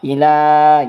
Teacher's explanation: maka hukumnya adalah mad tabi'i yang dibaca 2 harokat